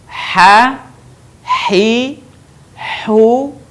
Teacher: huruf ini dikeluarkan dari tengah tenggorokan kita